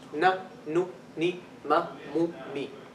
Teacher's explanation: the shortest ghunnah is when the meem and the noon have harakat